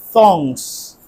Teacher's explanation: দেখো আমি যখন থংস বলছি তখন আমার জিহ্বাটা কিন্তু হালকা বাইরে আসছে